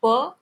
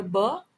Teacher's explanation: प और ब दोनों बाइलेबियल प्लोजिव है, लेकिन प वॉइसलेस है और ब वॉइस्ड